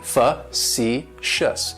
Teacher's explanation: Facetious has 3 syllables, and the stress is on that second syllable. It's like you're just saying the letter C, facetious.